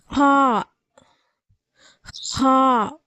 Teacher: ஹா உடைய மஹரஜ் பிறப்பிடம் தொண்டையின் ஆரம்ப பாகத்திலிருந்து பிறக்கப்படுகிறது அதாவது தொண்டையுடைய ஆரம்பப் பகுதியிலிருந்து காரை சொல்றோம் இல்லையா காய் சொல்ற மாதிரி இருக்கணும்